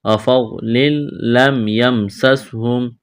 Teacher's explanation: تنوین کے بعد لام ہے، یہاں پر ادغام کریں گے بغیر غنہ کے